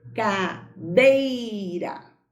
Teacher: O E foi pronunciado com mais força, então é uma vogal. A letra I foi pronunciada com menos força, então é uma semivogal.